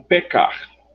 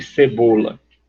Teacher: A gente tem em português 2 sons para o C, né? O C duro, esse C que a gente chama de gutural, e o som mais adocicado, que é esse, o C de cebola.